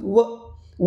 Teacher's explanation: व व जर म्हटल तर दात आणि ओट दोघांचही काम सुरू होतो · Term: दंतोष